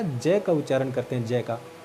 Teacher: तो हमारे जो जीभ है वो मशूड़ा को स्पर्श करती है, तो इसलिए हम इस जय को तालव्य में भी शामिल करेंगे और इस वत्सरीय में भी शामिल करेंगे।